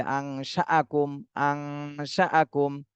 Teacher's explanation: নুন সাকিনের পরে ইকফার হরফ শিন এসেছে, এই জন্য এই নুন সাকিনে ইকফা গুন্না করতে হবে। আংশাআকুম, এটা হামজা, হামজার উপরে জবর, এজন্য ধাক্কা দিতে হবে।